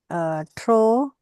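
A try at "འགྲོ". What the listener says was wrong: Drore, tro mare. Because of the a prefix, it became bolder, right? Dro, like this. Draw.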